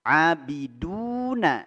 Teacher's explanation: Abiduna, du mad tabi'i, 2 harokat. Mad tabi'i cukup 2 harokat, jangan terlalu panjang.